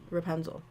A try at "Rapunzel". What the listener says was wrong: It's an A, not an E. Yeah, you keep saying Rapunzel. Can you say Rapunzel instead of Rapunzel?